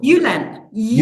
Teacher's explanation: We don't have the D sound for the letter J. It's an E sound.